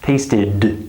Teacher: Tasted, I'm activating my vocal cords. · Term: vocal cord activation